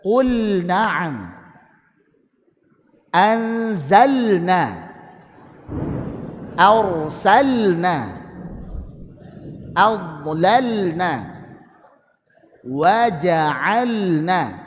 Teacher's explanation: lam pada fi'il ketemu nun dibaca izhar · Kemudian qul na'am harus dijelaskan walaupun lam dan nun ini berdekatan, bahkan kalau menurut yang 14 makhraj itu sama makhrajnya, tapi ini lam pada fiil ketemu nun dibaca idhar